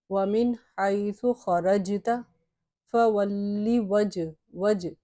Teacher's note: یہاں پہ جیم ہے اور جیم چونکہ حرف قلقلہ میں سے ہے تو اس لیے اس کو ذرا سا حرکت دے کے پڑھیں گے